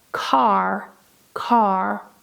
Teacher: notice that in American English, we pronounce the R sound very strongly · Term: rhotic